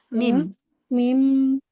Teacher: Mim dengan merapatkan kedua bibir disertai dengan guna